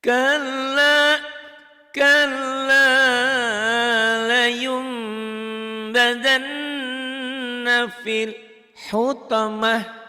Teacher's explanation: Nun mati jadi M. Layun jadi layum. Tapi disertai dengan bindeng. Gundah sedikit. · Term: iklab